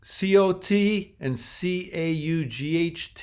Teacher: COT and CAUGHT. On the East Coast, they're very different. Cot and caught, but in other parts of the U.S., apparently they're pronounced the same.